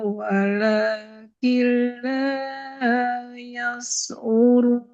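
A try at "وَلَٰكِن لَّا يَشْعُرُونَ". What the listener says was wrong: Yash'urun huruf shin. Walakin la yash'urun. Walakin la yash'urun. Masih mengarah ke huruf sin. Yas'urun. Kalau saya dengar mengarah ke huruf sin. Ada sedikit tersebar, cuman kurang maksimal. Walakin la yash'urun.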